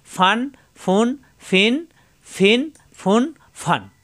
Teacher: উপরে দুই দাঁতের আগা নিচের ঠোঁটের পেটে লাগবে মাখরাজ ঠিকঠাক উচ্চারণ করতে হবে ফাদুইজের ফিন ফা দুই জবর ফান